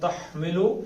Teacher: ہا کو حلق کے اوپر سے نکالنا ہے، تا کو پتلا پڑھنا ہے. تحمل کلو انسا، اس کو ناک سے نکالنا ہے، زبان ہوا میں رہے، انسا.